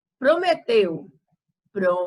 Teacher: Então, a sílaba tônica da palavra prometeu é teu.